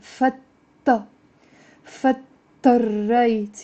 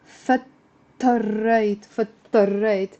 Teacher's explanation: The d and t kind of we're merging them together in a shadda.